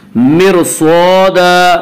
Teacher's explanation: और अगर रा साकिन के बाद उसी लफ्ज़ में हुरूफ मुस्तालिया में से कोई हर्फ आए तो रा बारीक नहीं होगी बल्कि रा पुर होगी। यहाँ रा साकिन के बाद उसी लफ्ज़ में हुरूफ मुस्तालिया में से स्वाद आ रहा है, इससे रा यहाँ पे रा पुर होगी।